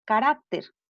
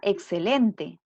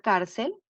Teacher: la sílaba tónica se encuentra en la penúltima sílaba